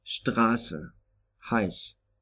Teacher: SZ is always pronounced like an unvoiced S